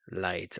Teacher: the L is pronounced like the regular l in English but not the dark L like in fo but rather the light L like in the word light